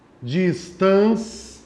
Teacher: O I tem a metade da força de pronúncia do A. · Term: semivogal